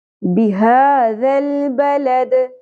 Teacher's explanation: دال ساکن پہ قلقلہ ہوگا آیت مکمل ہونے کی صورت میں